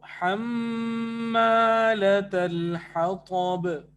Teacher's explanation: میم الف زبر ما یہ مد اصلی بال الف ہو گیا. اور طا موٹا ہے اور با کے اوپر قلقلہ ہے